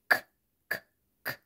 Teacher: شوفوا كده اللسان، اخر اللسان او back of the tongue against the velar ridge